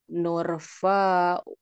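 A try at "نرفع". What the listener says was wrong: Fa nanya kurang Bu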